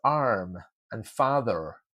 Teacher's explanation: in American English, the R is very well pronounced as arm and father